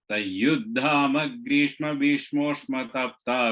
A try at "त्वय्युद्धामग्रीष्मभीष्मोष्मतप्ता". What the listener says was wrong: And the first letter of the third line is Tvayuddham. I think you said Tai. Tvayuddham. Twa.